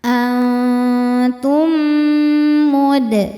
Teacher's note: Berikutnya ada idgham mimi karena mim sukun bertemu mim berharakat. Cara bacanya mim dileburkan ke mim kedua disertai dengung. Dan ini boleh juga disebut dengan idgham mutamain ya.